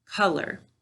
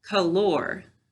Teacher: i'll start by putting the emphasis on the first syllable color now i'll put it on the second syllable